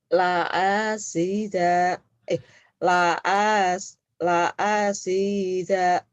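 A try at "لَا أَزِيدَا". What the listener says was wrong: Jangan la asi ya, Z. La azi. Zai. Zaitun. Zam-zam.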